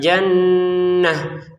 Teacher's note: Untuk kata jannah nunnya kita dengungin dua harakat